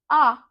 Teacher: आ बड़ा जब बोलोगे ना तो आपका पूरा मुह खुल जाएगा